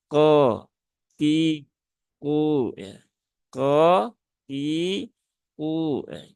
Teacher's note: Huruf kof dia termasuk huruf-huruf isti'la ya, yaitu huruf-huruf tebal, maka pengucapannya yaitu dengan cara menaikkan pangkal lidah. Dan perlu diingat dia jangan terlalu berlebihan.